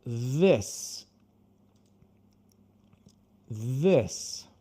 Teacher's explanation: de novo vamos colocar a língua para fora, só que agora vai ter uma vibração. É como se você tentasse pronunciar a letra Z com a sua língua para fora.